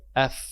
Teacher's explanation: Ujung gigi atas bertemu bibir bagian bawah bagian dalam, bukan bagian luar. Kalau bagian luar af, tapi kalau bagian dalam af. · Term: huruf fa